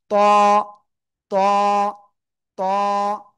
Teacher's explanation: জিহ্বার আগা, উপরে 2 দাঁতের গোড়ায় লাগান, লাগান লাগান, লাগিয়ে একটু মোটা আওয়াজে পড়তে হবে। ত, এক আলিফটা নিয়ে, কয় আলিফ?